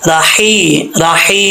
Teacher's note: ये हा बरीक है, इसका ताल्लुक हल्क से है, सीने की तरफ नहीं है